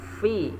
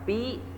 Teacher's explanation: Cara membunyikan huruf fa adalah ujung gigi seri atas bertemu bibir bawah bagian dalam. Fa, bukan pa.